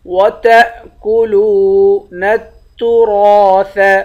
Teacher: لام کو واو سے ملائیں گے، واو کو ایک الف کے مقدار کھینچ کر پڑھیں گے، واو حروف مدہ ہے۔ وَتَأْكُلُونَ التُّرَاثَ، نون کو تا سے ملائیں گے، الف سے بھی نہیں ملائیں گے، لام سے بھی نہیں ملائیں گے۔